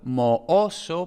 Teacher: al ser una palabra no tan frecuente, pues se tiende a conservar las dos vocales, además porque, bueno, la segunda vocal es tónica, ¿no? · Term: dos vocales independientes